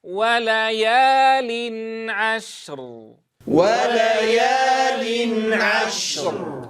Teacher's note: لماذا أطلنا في زمن الشين؟ لأنها حرف رخو، إذن لها زمن طويل.